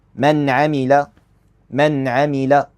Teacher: Don't make the lam heavy. It's light.